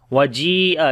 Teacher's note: جی کو لمبا کریں گے، یا مدہ ہے یہاں پر اور بڑی مد بھی ہے تو مد متصل ہوگی، 4 سے 5 سیکنڈ لمبا کریں گے